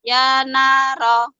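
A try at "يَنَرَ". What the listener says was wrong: Jangan panjang. Ya naro. Nggak ada yang panjang.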